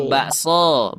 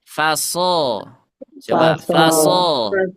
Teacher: Semuanya dibaca dengan bacaan tafkhim. Tebal. Dengan bacaan tebal.